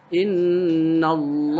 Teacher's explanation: ini adalah lam jalalah atau lam yang dibaca tafkhim. Tafkhim itu apa sih? Tebal.